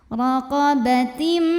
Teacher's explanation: ada Idgham Bighunnah karena ada tanwin kasroh menghadapi huruf mim maka tanwinnya masuk ke mim dan dengungkan tahan bunyi m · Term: idgham bi gunnah